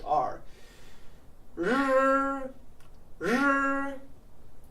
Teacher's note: flow through sure sure okay we can't avoid it any longer the R is kind of like in English but your tongue has to curl back even further than in English · The R is kind of like in English, but your tongue has to curl back even further than an English R. R, r. To pronounce this sound, you basically have to make an SH sound.